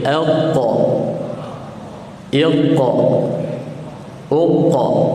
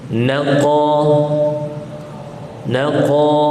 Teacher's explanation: Jangan bagi dia naik ataupun jangan bagi dia bergerak. Sebab yang bergerak pangkal lidah sahaja, huruf qaf.